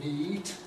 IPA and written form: niːt (neat)